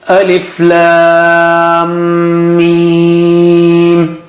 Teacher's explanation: Mim has shadda there, so you got to stretch at that merger point twice with Gunna